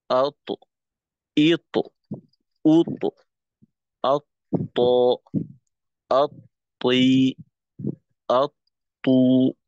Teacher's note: ঠোঁট গোল রাখা যাবে না, ঠোঁটকে ছড়াই রেখেই কলকলার দ্বিতীয় অংশ আওয়াজটাকে বের করতে হবে। আর বাতাসকে নিয়ন্ত্রণ করতে হবে কলকলার সময়।